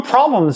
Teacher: How many of you noticed that there wasn’t an /l/ when I said “problems” earlier?